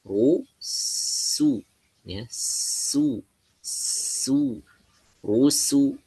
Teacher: posisi mulutnya ditarik sedikit ya supaya menjaga tipisnya huruf sin